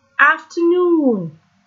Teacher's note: The stress is in the end.